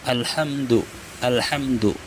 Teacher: Mim mati bertemu dal, hukumnya izhar syafawi. Jadi tidak direndam mimnya dan mulut tertutup rapat ketika mengucap mim.